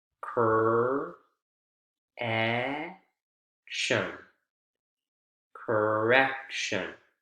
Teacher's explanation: Middle syllable is the strongest, and it's the one that comes right before the suffix.